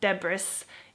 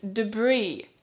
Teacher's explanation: word I want to talk about is the word debris but it has an S at the end so it's a silent s